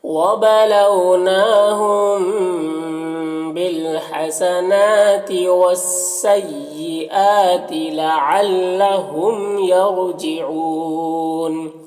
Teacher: میم ساکن کے بعد با ہے تو اخفاء شفوی ہوگا، غنہ اور اخفاء کے ساتھ میں پڑھیں گے۔ بالحسنات، نون میں کھڑا زبر ہے جو الف مدہ کی طرح ہوتا ہے۔ · یرجعون، را کو پر پڑھیں گے، اور یہاں پر وقفی کی صورت میں مد عارض وقفی ہوگا